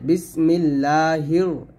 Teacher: এখানেও লা বলছে কারণ এই যে এটা হলো আল্লাহ শব্দ লাম এই লামে ডানে যখন জের আসবে তখনই পাতলা হবে বিসমিল্লাহির এখানে আগে রকে ধরবে এবং এখানে রটাকে মোটা করে ধরবে